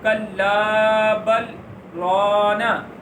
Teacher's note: کلا بل رانا، اب میرا سانس وہی ہے، آواز میں نے تھوڑی دیر کے لیے اپنی آواز کو روکا ہے لیکن سانس وہی تھا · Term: سکتہ